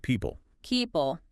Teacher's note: Okay, people. Often that middle vowel sound gets reduced or even disappears. Sounds more like people.